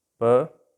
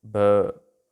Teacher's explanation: ब जो साउंड है ना उसमें वाइब्रेशन अपने थ्रोट में, तो वो वॉइस्ड साउंड होगी